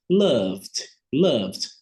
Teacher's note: Se eu pronunciar eu vou perceber que essas duas consoantes são vibratórias, são voiced, né? Há vibração das cordas vocais, e aí, nesse caso, a gente vai pronunciar o ED com a letra D, bem suave.